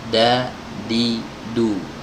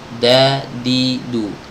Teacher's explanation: Kalau dal ya, dal itu bukan ke gusi tapi ke pangkal gigi seri bagian atas, sama seperti huruf ta.